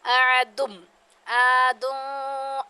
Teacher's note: اب الف سے پہلے زبر آ جائے تو یہ حروف مدہ میں سے ہوتا ہے، تو اس کو ہم 2 الف کے برابر کھینچتے ہیں